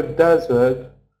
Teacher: even though desert it's stressed on the first syllable isn't it usually